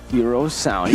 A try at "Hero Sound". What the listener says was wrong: Why do you say it like that, man? There's so much emphasis on the R.